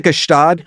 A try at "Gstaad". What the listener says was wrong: Oh my God, it's called Gstaad. You don't pronounce the G.